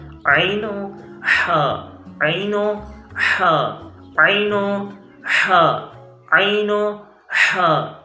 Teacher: یہ 2 حروف وسط حلق سے ادا ہوتے ہیں